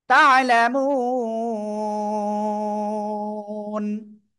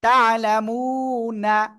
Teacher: সাকিন হইলে তিন আলিপ টান হবে। একালিপ মাদের পরের হরফে অক্ফ করলে সাকিন হলে তিন আলিপ টান